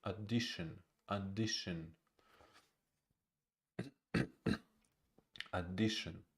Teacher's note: First syllable is unstressed.